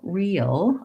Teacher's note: i have to glide into a dark l